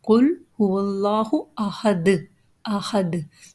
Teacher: Allah's name has the Lam again, which is a Shubha Mustaliya letter, means a temporary heavy letter, and here it will read with Mukhaffam because it has Fatha before it means heavy. And Dal has a Duma Tanween.